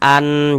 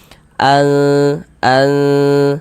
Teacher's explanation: Bunyi nun sukunnya kita baca samar. Jangan kita baca an. Jelas begitu jangan. Tapi dibaca samar. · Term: ikhfa hakiki